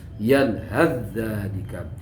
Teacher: Kalau diwasolkan atau dibaca terus maka ta-nya menjadi langsung pada dzal